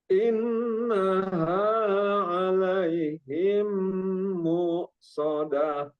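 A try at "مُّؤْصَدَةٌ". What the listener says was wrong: Terus ingat itu hamzah mu-nya ya, banyak yang kebawa jadi kayak ain. Jadi jangan beda ain. Beda ain, beda hamzah. Mu biasa mu. Jangan sampai mu. Kalau mu itu ain tapi ini mu. Mu biasa.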